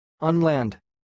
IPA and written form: ʌn-lænd (Unland)